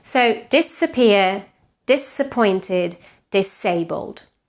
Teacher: any word that starts with the prefix dis is pronounced with the voiceless S